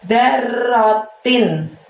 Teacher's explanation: darnya pendek, r-nya double, lalu tinnya bunyi n-nya terdengar dengan jelas, terucap dan terdengar dengan jelas ya